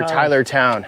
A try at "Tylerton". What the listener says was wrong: Yeah, it looks like it says Tylertown, but we say Tylerton. Like for the mountains, we say mountain.